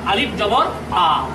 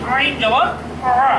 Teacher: আলিফ উচ্চারিত হচ্ছে এটা শূন্যস্থান থেকে, মুখের শূন্যস্থান থেকে আলিফ, আর আইন উচ্চারিত হচ্ছে এটি কণ্ঠের মাঝখান থেকে। এবং উচ্চারণ করার সময় কণ্ঠটাকে একটু চিপা ধরতে হবে, যেমন আইন জবর আ, আর আলিফ জবর আ, আলিফ জবর আ, আইন জবর আ।